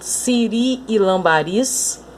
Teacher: Essas palavras também são oxítonas, porque a sílaba tônica delas é a última